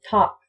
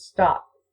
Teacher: Just put your hand in front of your face when you're saying top versus stop. You'll feel a burst of air when you say top, but not when you say stop. If you practice, you can cut the S off and keep the T without the aspiration.